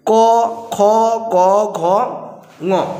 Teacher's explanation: এটা হচ্ছে কণ্ঠ ব্যঞ্জন, মানে জিহ্বা তালুর পশ্চাৎভাগ স্পর্শ করে বলে একে পশ্চাতালু জাত ধ্বনিও কিন্তু বলা হচ্ছে